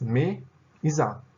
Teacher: Na palavra mesa, eu tenho duas sílabas, me e za. A sílaba tônica mais forte é o me, é nela que está a ênfase. Za é uma sílaba átona, portanto.